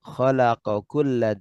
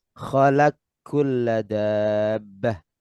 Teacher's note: Jadi lamnya di sini berharakat sehingga qof diidgamkan ke kaf. Demikian pula pada lafaz khalaqo kulla dibaca khalaq kulla dabbah.